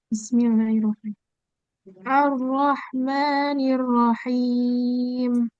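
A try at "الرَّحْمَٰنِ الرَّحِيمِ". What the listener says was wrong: Oke, sudah bagus. Itu cuman kurang tebal di tasdid ro-nya. Coba.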